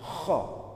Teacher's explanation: kalau kho itu ada kayak gerunjalannya, ada kayak ngoroknya, atau seperti orang yang mengeluarkan riak. Kho. Tetapi jangan juga terlalu berlebihan sampai riaknya beneran keluar gitu.